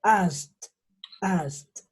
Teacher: Cuando terminan en K, el sonido es T. T. Entonces yo diría asked, asked.